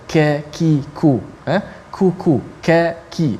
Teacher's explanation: Yang mana qaf dengan kaf makhrajnya dekat, tetapi sifatnya berbeza. Kaf dia nipis, dan kaf ada angin sedikit, ada hamas, ka. Kalau kita sebut ka, ki, ku, ku, ka, ki, dia ada angin sikit.